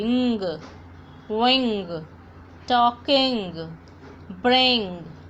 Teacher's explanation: Now it gives sound, यानी न और ग को हम एक साथ पढ़ेंगे. न की आवाज़ नाक से आएगी और ग की आवाज़ गले से आएगी.